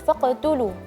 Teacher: huruf ta perlu ditipiskan